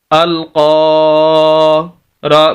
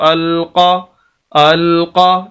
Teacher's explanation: یعنی قاف کے آگے الف ہے تو قاف کو ہم لمبا کریں گے کیونکہ یہ الف مدہ ہے۔